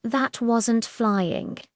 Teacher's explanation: The emphasis on wasn't shows strong disagreement. It's a direct contradiction.